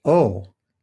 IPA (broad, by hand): o